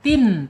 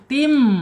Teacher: Jadi mim masuk ke al-khaisum, masuk hidung ya. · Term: iqlab